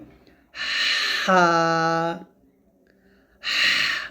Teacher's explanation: গলার মাঝখান থেকে চাপ দিয়ে চিকন করে উচ্চারণ করতে হবে। এরকম ভাবে একটা শব্দ নিয়ে আসতে হবে, হা, এরকম, হা, হা।